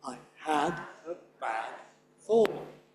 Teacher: Remember that I at the beginning, not stressed.